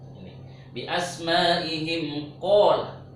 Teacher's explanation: Habis mim itu qaf, maka mimnya itu tidak boleh dengung.